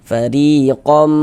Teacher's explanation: Bunyi non sukun atau bunyi tanwinnya itu dimasukkan ke dalam huruf idgham ghunahnya. Kemudian disertai dia dengan ghunah. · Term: idgham bighunah